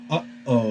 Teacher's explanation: uh breaks the airflow so that's when you hear uh oh you hear that stop in the sound that's your glottis causing that stop · causing that stop all right that's the sound of the olive the aleph is basically a glottal stop